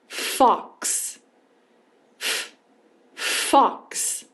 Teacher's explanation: posição da boca emissão de som sem vibração somente o sopro · o F é um som sem voz. Então, a gente vai emitir o som sem vibração.